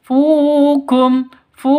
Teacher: Fu panjang dua ketukan karena ada wau mati diawali dengan Dom domah